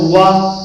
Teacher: तो वकारस से दंतोष्ठ, वा जब हम लोग बोलेंगे ना, वा परीक्षा में कि वा कहां से बोला जाता है, तो वा ऐसे बोलकर वा में ओष्ठ तो है ही है, तो दांत भी जोड़ देंगे, दांत और ओष्ठ दोनों जगह से बोला जाता है